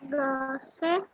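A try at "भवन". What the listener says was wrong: Base? Why are you reading Base? You should read Bha, Va, and Bhavan.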